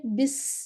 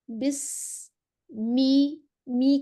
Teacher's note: सीन में सीटी होनी चाहिए।